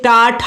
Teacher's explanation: ये टा ठा जो है या मूर्धन्य से बोले जाते हैं, इनका उच्चारण मूर्धन्य से होता है।